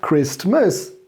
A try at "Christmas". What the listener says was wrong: Christmas. You don't pronounce the T.